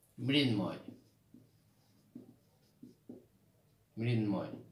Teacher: অঘোষ অল্পপ্রাণ প্রথমে থাকবে, দ্বিতীয় অংশে নাসিক্য থাকবে